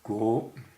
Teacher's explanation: Pinyin is G-U-O, and this is second tone, which is a rising tone